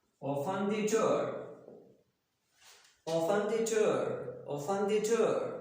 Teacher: If you're talking about a sentence which gives command, then there will be what type of intonation? There will be just falling intonation.